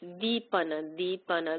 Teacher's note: This is a soft D made with the tongue behind the teeth.